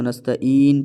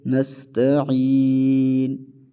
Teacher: عین کو گلے کے درمیان سے ادا کریں گے، عین کی مخرج سے، نستعین اس طرح پڑھا جائے گا۔